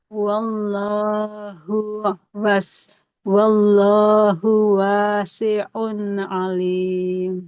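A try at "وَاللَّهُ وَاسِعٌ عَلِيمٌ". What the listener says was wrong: Hanya tadi ya, yang pertama masih perlu dilatih itu tadi, mengalirnya suara huruf sin. Dia sudah mengalir tapi terlalu cepat.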